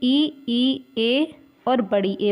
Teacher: जीभ के आगे वाले हिस्से से ई, ए और बड़ी ए बोली जाती है